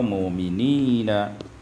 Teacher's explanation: ibdalul hamzati wawan, tukarkan hamzah dengan waw